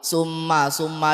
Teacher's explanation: Karena ada mim bertasydid. Cara bacanya bagaimana? Dengung. Lama dengungnya berapa? 1,5 alif atau 3 harokat. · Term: Guna musyaddadah